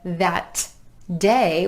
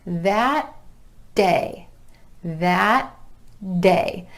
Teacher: the tongue goes up behind the teeth to the alveolar ridge for that final T, and then just releases into the beginning D for day.